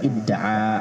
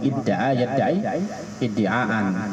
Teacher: Biasanya idda'a yadta'i idti'aan. Akhirnya ta'nya karena satu makhraj dengan dal di idgham